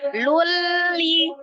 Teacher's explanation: Ditasdidkan tapi tidak disertai dengan dengung, ditasdid saja ya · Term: idgham bila gunnah